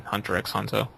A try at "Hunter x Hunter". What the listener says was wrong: Hunter x Hunter does not deserve that, and by the way, we should not pronounce the X.